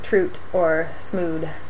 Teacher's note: sometimes these interdental fricatives turn into alveolar stops